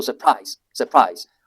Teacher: Surprise always takes the stress on the second syllable.